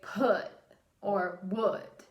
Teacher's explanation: this is where we have a glottal stop at the end of a sound